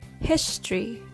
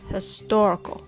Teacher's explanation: history has the stress on his historical has the stress on tor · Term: stress placement